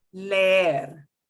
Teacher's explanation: The two E's together, you will just drag out or prolong that E sound.